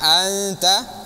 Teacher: cara baca ikhfanya untuk huruf ta itu ujung lidahnya di gigi seri bagian bawah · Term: ikhfanya huruf ta